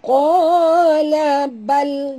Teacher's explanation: bila dia mati tongkatkan lidah kita ke langit, bacaannya terang bunyi lam itu ya, lam yang mati itu.